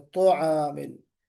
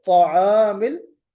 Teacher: बाज लोग इसमें वाव लगा देते हैं, तआमिल। तो तआमिल, हमें ता को पुर भी पढ़ना है और मुंह का गोल भी नहीं होना है, मुंह को गोल नहीं करना है।